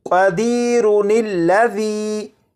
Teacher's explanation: کو ملا کر پڑھنا ہو تو اس لفظ اور اس لفظ ان دونوں الفاظ کے درمیان میں نون کا اضافہ کریں گے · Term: نون قطنی